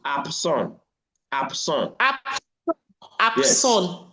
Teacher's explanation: The B here becomes P. There's a process of assimilation in this context.